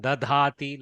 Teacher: Some places the hrasva dakara, sorry, the alpa prana dakara has become mahaprana